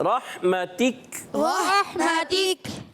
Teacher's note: اور ہا کی ادائیگی کلیئر کرنی ہے، اور تا باریک، کا بھی باریک